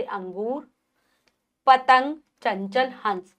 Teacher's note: अनुस्वार का उच्चारण करते समय श्वास केवल नाक से निकलती है,